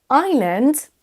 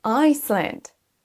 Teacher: Dans le premier cas de figure, le S ne se prononce pas, alors que dans le deuxième, oui, on entend un son S.